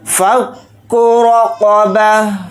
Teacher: ساتھ ملا کر پڑھیں گے، را کو جلدی پڑھیں گے اور را کے اوپر زبر ہے تو را کو یہاں پر موٹا یعنی پر پڑھیں گے ، قاف کو جلدی پڑھیں